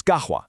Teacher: turning a sharp Q sound into a deep ga. So gahwa for coffee becomes gahwa.